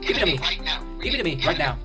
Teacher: Big change comes from the T's being pronounced as D. And this happens because the T's fall between two vowel sounds.